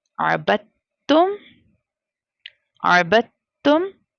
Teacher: सो हमें जो इसे बा को ता के साथ मिलाना है, ना कि साकिन लेटर के साथ। साकिन लेटर यहाँ पर दाल है, दाल साकिन लेटर साइलेंट हो जाएगा।